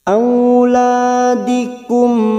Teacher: mim sukun bertemu lam dibaca jelas tanpa mendengung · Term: idhar syafawi